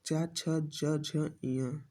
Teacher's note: तालुब्य व्यंजन जिन वर्णों का उच्चारण करते समय जीभ का मध्य भाग हमारे तालु को स्पर्श करता है उन्हें तालुब्य व्यंजन कहते हैं।